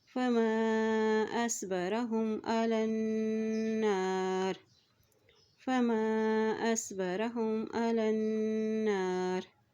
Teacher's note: यहाँ देखिए अलन, लाम की ज़बर को नून के साथ मिलाते हुए पढ़ेंगे क्योंकि नून के ऊपर शद है। और जब भी नून के ऊपर शद आ जाती है तो वहाँ पर गुन्ना अदा किया जाता है